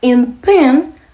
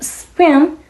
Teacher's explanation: It is called aspiration. In pen the P is aspirated and spin the P is unaspirated.